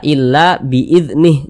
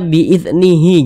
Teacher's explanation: huruf Ha ini kita baca illa biidnih Jangan dibaca biidnihi jangan tapi huruf h-nya ini kita sukunkan atau kita matikan